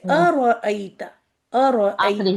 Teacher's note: یہ حمزہ حلق سے نکلتا ہے لیکن بیچ سے نہیں، ایک دم نیچے سے